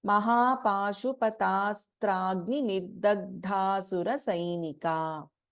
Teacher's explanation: In Nirdagdha, the da is an alpaprana, then we have g and then we have dha Mahaprana.